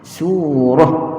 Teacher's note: Bezanya ta marbutah bila kita berhenti dia jadi ha.